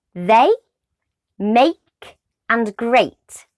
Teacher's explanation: when you say the sound a your mouth moves shape and that's because it's made up of two vowel sounds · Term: diphthong sound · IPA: /eɪ/